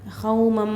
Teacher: मालू गुन्ना का मीम आकर है तनवीन के बाद तो गुन्ना के साथ मिलाकर पढ़ना है